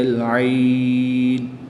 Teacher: وقف کی حالت میں مد لین عارض ہوگی، 2 سے 3 الف تک کھینچ کر پڑھیں گے۔